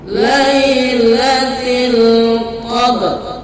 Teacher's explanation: Dikarenakan ada huruf ro sesudahnya, maka ketika dia memantul digabung dengan huruf ro. Jadi pantulannya tidak terlalu terbaca. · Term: qalqalah sughra